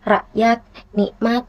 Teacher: Namun saat kita mengucapkannya itu menjadi rakyat, nikmat. Jadi kayak lebih hilang gitu huruf K-nya ini. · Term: huruf K yang seperti dihilangkan